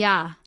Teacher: when you say yah the I is short and the ah is long · the dip thong yah is made up of the Glide I and the single vowel a